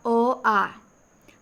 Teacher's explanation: अ और आ इन दोनों स्वरों का उच्चारण कंठ से होता है